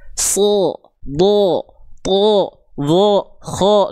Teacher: Kalau huruf tebal vokalnya seperti O.